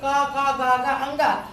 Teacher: गले से आवाज आई, इसलिए इन ध्वनियों को हम कंठ कहते हैं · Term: कंठ ध्वनियां